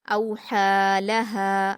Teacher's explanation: औहालहा, औहालहा, हमज़ा पर वाउलीन है, नरम आवाज़ के साथ जल्दी पढ़ेंगे। हा पर खड़ा ज़बर है 2 हरकत खींचकर पढ़ेंगे। यहाँ जो या लिखी हुई है ये सिर्फ लिखी जाती है, पढ़ने में नहीं आएगी, इसलिए आप सिर्फ हा पर खड़ा ज़बर बोलेंगे।